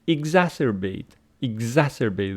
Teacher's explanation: see the stress pattern where the stress Falls exacerbate exacerbate the second syllable and then exacerbate exacerbate exacerbate this is American and this one